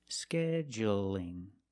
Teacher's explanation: it's light because the L is between vowels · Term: light L